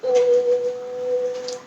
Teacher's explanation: जसं ओ आणि म. ओम हा जास्त लांबण लावून म्हणायचा असतो.